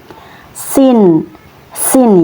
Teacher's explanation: tipis ya sin kemudian ini berharakat fathah maka dibaca sa huruf sin ini yaitu tempat keluarnya dari ujung lidah yang menempel pada dinding bagian dalam dua gigi seri bawah